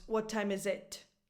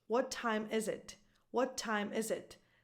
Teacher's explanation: the stress is on is again the verb